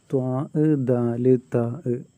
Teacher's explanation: എന്ന് വെച്ചാൽ ത്വാ, ദാല്, താ, ഈ മൂന്ന് അക്ഷരങ്ങളുടെയും മഖ്റജ്, അതായത് ഈ അക്ഷരം ഉച്ചരിക്കാൻ പുറപ്പെടുന്ന ആ സ്ഥലം, ഉച്ചരിക്കുന്ന സ്ഥലം നാവിൻ്റെ തലയും മേലെ മുൻപല്ലുകളുടെ മുരടുമാണ്. ഈ മൂന്ന് അക്ഷരത്തിനും ഒരേ മഖ്റജാണ്.